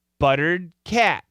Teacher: we can stretch the short a